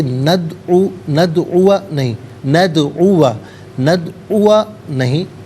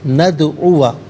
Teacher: دال ساکن ہے لیکن حرف قلقلہ ہے، آواز لوٹتی ہوئی محسوس ہونی چاہیے، ندعو نہیں، ندعو نہیں، ندعو، یہاں پر آواز لوٹتی بھی محسوس ہو۔